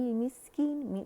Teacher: सीन पे हमने सफ़ीर भी वाज़े करनी है, हम्स भी वाज़े करने, और कीन, कीन बारीकी से हम खूबसूरती से अदा करेंगे।